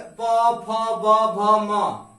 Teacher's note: प वर्ग में प, फ, ब, भ, म, ये सभी अक्षर आते हैं। इनका सभी का उच्चार स्थान क्या है? ओष्ठ है।